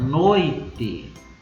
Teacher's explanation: O O tem o som mais forte, portanto é uma vogal. E eu vou ter o I, que é o som mais fraco, portanto é uma semivogal. Quando eu tenho uma vogal primeiro mais uma semivogal, o ditongo é decrescente.